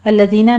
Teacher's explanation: الذین میں دال کو نرمی سے پڑھتے ہوئے یائے مدہ ادا کریں گے